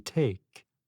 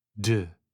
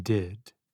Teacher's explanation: have the sound as in pay and [Music] as in baby with the tip of the tongue contacting the gum ridge